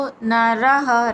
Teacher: ప్రియో నరః రా తర్వాత విసర్గుచ్చరణ హా కింద పలుకుతాం